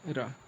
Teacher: जिस व्यंजन की ध्वनि के उच्चारण करने पर जीभ की नोक वायु से रगड़ खाकर कांपती है, उसे लुंठित व्यंजन कहते हैं।